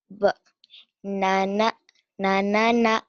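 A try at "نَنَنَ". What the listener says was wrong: Na, bukan ba ya, titiknya di atas. Ingat, titiknya di bawah ba. Naik, nun. Na.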